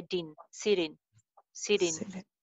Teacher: ट के बाद वावल साउंड आ रही है ना ई, तो ये ड बन जाएगी. सो ड को हम इन के साथ मिला देंगे.